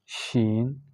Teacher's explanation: اس کو جب ہم پڑھتے ہیں شین، تو یہ زبان کی درمیان سے اور مطلب اس کی آواز پورے منہ میں پھیل جاتا ہے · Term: تفشی